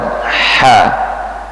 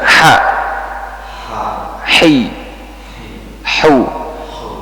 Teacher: udara yang keluar kalau H itu menyebar menyebar di katup nafasnya Katup nafas dibuka sedikit habis itu udaranya dikeluarkan